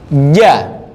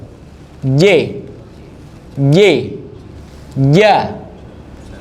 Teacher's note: J, ja, pakainya tengah lidah, tempelin ke langit-langit. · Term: huruf J